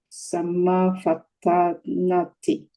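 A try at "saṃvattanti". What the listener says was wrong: Samvattanti. It's not the samma. It's samvattan.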